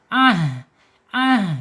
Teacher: Anhumul ha di makhrajnya ha di bawah tenggorokan. Kemudian secara sifatnya ha ini ada di alhams ketika sukun.